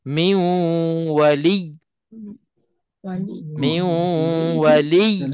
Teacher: Huruf-huruf yang ada sabdu, kalau kita berhenti, walaupun kita berhenti, kita matikan huruf itu, tapi huruf yang sabdu itu tetap kena tekankan sabdu tu, walaupun kita dah matikan huruf yang kedua